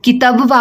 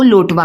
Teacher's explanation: अवधि में ज्यादातर या तथा वा ध्वनि का प्रयोग किया जाता है